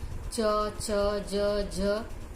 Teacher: एक उच्चारण अवयव दूसरे उच्चारण अवयव को स्पर्श करता है तो स्पर्श करते समय वायु कुछ रुककर घर्षण के साथ बाहर निकलती है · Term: स्पर्श संघर्षी